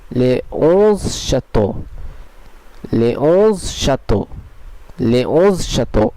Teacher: এখানে আপনারা নিশ্চয়ই খেয়াল করলেন যে এখানে একটি ভাওয়েল ও থাকার ফলেও এসটি ও এর সঙ্গে সংযুক্ত হলো না, বরং এটি আলাদা একটি শব্দেই থেকে গেল, আর এস কনসোনেন্টটি সাইলেন্ট থাকলো।